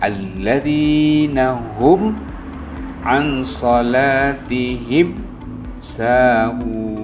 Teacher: mimnya harus jelas, jangan digunnah, tetapi alladzina hum an salatihim sahun. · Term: izhar syafawi